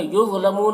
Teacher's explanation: ولا یہاں پر الف مدہ ہے، ایک الف کے برابر کھینچیں گے۔ یظلمون ضا کو پر پڑھیں گے، حروف مستعلیہ میں سے ہے